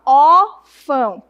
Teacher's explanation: O tio apenas marca que o som é nasal e o agudo é que indica que a sílaba tônica é o o